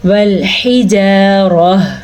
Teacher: را کو پر پڑھنا ہے